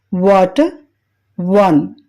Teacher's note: రెండు పదాలు దగ్గరగా వచ్చి చిన్న వృత్తంగా అంటే స్మాల్ సర్కిల్ గా చేయబడుతుంది నాలుక వెనుక భాగం ఎత్తబడుతుంది